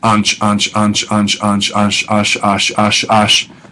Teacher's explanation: So just by repetitive process of saying something like that sound, that ansh, ansh, ansh, ansh, ansh, ansh, ash, ash, ash, ash, ansh kind of melds into ash. N's often get assimilated with a strong consonant that follows them in Hebrew. So instead of insha or something like that, you get isha, two shins in a row.